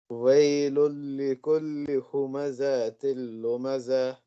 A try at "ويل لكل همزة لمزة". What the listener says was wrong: ये जा को ज्यादा खींचना नहीं है बेटा। हुमज़तिल लुमज़ा।